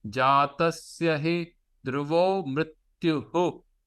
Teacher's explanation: So you got that natvam and mrityuhu. So don't say mrityu. There's a visarga after it.